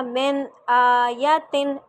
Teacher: آیاتن صرف حمزہ کو لمبا کریں گے، یا کو نہیں کرنا